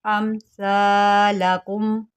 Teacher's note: سا جو ہوتا ہے اس کو سیٹی کے بغیر پڑھتے ہیں، آپ نے اس میں جو ہے وہ سیٹی نہیں آنے دینی۔